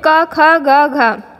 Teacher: क में बहुत थोड़ी सी वायु निकली, ख बहुत ज़्यादा वायु निकली